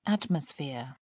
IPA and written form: ˈætməsˌfɪə (atmosphere)